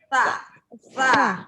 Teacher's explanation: Sa itu S tipis. Jadi digigit juga di ujung lidah. Ujung lidah digigit sama gigi depan.